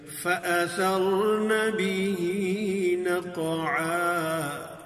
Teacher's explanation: حمزہ کو قوت سے ادا کریں گے، تحقیق کے ساتھ ادا کریں گے